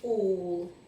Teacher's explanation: this is making a kind of o sound, okay, rather than its usual ah